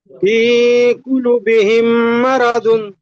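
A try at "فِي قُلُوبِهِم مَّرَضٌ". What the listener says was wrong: ফি কুলু, লাম ও পেশ লু, একালি টান দিয়ে বলতে হবে। আপনি হারাকাতের মতন বিনা টানে পড়েছেন। ফি কুলু বিহিম,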